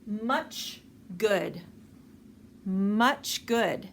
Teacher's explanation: the g the hard g sound much good much good so we actually are pronouncing the g sound with our lips in the ch position · we actually are pronouncing the G sound with our lips in the ch position. Much good. Even though the G sound, when we pronounce it by itself, g, our lips are slightly open, but not pronounced like they are with the ch. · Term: co-articulation